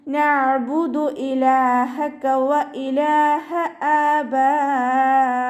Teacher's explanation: അണിൻ്റെ മഖ്റജ് ശ്രദ്ധിക്കുക കേട്ടോ. സൗണ്ടിനെ ഹംസയുടെ സൗണ്ടായി പോവാതെ നോക്കുക